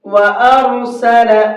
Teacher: وَأَرْسَلَ عَلَيْهِمْ طَيْرًا أَبَابِيلَ، وَأَرْسَلَ، را کو منہ بھر کے پڑھیں گے، ارسلہ نہیں پڑھنا ہے